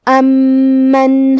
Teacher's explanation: کلمت امن میں میم پہ تشدید ہے، لہذا ہمیں 2 حرف کے برابر میم کو پڑھنا ہے